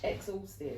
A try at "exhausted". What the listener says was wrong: You're just emphasising it too much. You're like, exhausted.